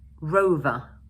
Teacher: in British English, we don't normally pronounce the final r sound, and instead, we use the Schwa sound